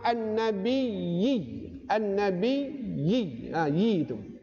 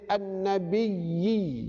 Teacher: Kita baca yi itu wajib 2 harakat kerana dia mat asli.